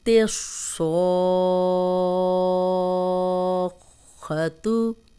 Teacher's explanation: صوت کو ہم موٹا پڑھیں گے اور الف مدہ بھی ہے، صوت زبر الف سو، آگے شد آ گئی ہے تو الف مدہ 6 حرکات ہم لمبا کر لیں گے، خو کو موٹا پڑھیں گے۔